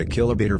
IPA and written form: əˌkɪləˈbeɪtɔːr (Achillobator)